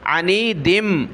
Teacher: ناک میں آواز پیدا کر لیں آپ جب ملا کر پڑھیں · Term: تنوین